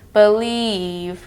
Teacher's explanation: Similar to the double E, but the pitch goes slightly downhill. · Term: IE phonogram